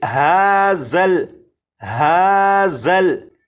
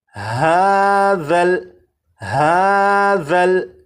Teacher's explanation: اب اس لفظ کو پڑھیں گے، اور اس لفظ میں یہاں پر دیکھیں یہ ذال ہے، ذال کو نرمی سے پڑھیں گے، یعنی سی ٹی کی آواز کے بغیر پڑھیں گے، اور اس حرف کی سی ٹی کی آواز کو ختم کرنے کے لیے زبان کی نوک کو اوپر کے سامنے کے 2 دانتوں کے سرے سے جب لگائیں گے تو ذال کے اندر جو سی ٹی کی آواز ہوتی ہے وہ ختم ہو جائے گی۔ اب اس لفظ کو اس طرح سے نہیں پڑھیں گے ہازل ہازل، اس طرح سے نہیں، بلکہ ہاذل ہاذل۔